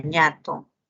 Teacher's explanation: La ñ, que también es una nasal, nasal palatal, sonoro, en la palabra ñato.